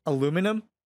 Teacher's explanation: You've dropped the I in aluminium